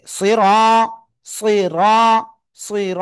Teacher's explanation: রর উপরে জবর মোটা আওয়াজে পড়তে হবে।